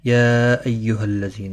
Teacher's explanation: یا مد منفصل ہے، 3 الف کے برابر کھینچ کر پڑھیں گے۔ ایہا، کسی بھی حرکت والے حرف کو کھینچنا نہیں، تشدید والے حرف کو تھوڑا سختی کے ساتھ پڑھیں تاکہ تشدید ظاہر ہو۔